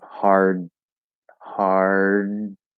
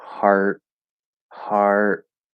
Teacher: do everything the same as you do for the t except we need a little bit of the voice to come through as we're stopping it · it's just breath because i'm not using my voice so it's that little bit of voice that gets caught in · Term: d stop